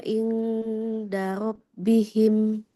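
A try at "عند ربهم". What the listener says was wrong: Kalau nun sukun ketemu dal, dia bunyinya nggak eng. Karena kan makhraj huruf dalnya di depan ya. Jadi ketika ikhfa itu posisi kita sudah siap-siap ke makhraj huruf yang di depannya yang ikhfanya. Berarti ujung lidahnya sudah siap-siap di makhraj dal. Ujung lidah ke pangkal gigi seri atas.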